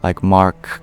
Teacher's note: Whereas you couldn't do that with a name that had an abrupt consonantal stop in it, like Mark. You have to stop on the k. You can't prolong the k sound.